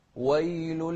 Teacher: في ناس يقولون ويل فيفخمون الواو وهي مش مفخمة.